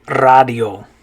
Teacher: remember in spanish the a is going to make an ah sound